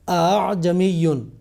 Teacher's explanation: تسہیل کا مطلب ہے حمزہ کو نرمی سے ادا کرنا، جیسے ہم روایت حفص میں بھی دیکھتے ہیں کہ جو اعجمیٌ یہ کلمہ ہے، اس کے دوسرے حمزہ میں تسہیل ہے۔ پہلے حمزہ کو تحقیق یعنی پورے جھٹکے سے ادا کیا جاتا ہے، اور دوسرا حمزہ نرمی سے ادا کیا جاتا ہے، نسبتاً نرمی سے ادا کیا جاتا ہے، اس کو تسہیل کہتے ہیں۔